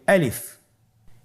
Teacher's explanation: আলিফ হরফটি মাখরাজ হলো আপনার মুখের শূন্যস্থান থেকে গলা এবং মুখের শূন্যস্থান হতে আলিফ হরফটি উচ্চারিত হয়।